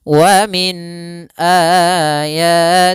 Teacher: Maka ditandai di sini dengan tanda berbentuk seperti ini, ada seperti huruf ya dan di atasnya tanda seperti ini menandakan dia kita panjangkan 4 harokat. Maka hi-nya harus kita panjangkan 4 harokat. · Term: mad silah tawilah